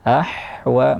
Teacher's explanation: Ahwa jangan terganti ke huruf ha, ahwa, tapi dia ha di tengah tenggorokan, wasatul halqi. Ahwa mengalir nafas ha, yaitu hamas.